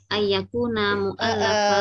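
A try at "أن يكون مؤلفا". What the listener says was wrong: Kalau baca di sini karena bukan Al-Qur'an, kita bacanya an, jangan ai. An yakuna mu'allafan.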